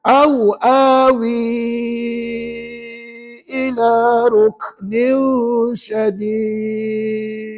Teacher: Wi tu dibaca dengan 4-5 harakat. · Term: Mat jaiz munfasil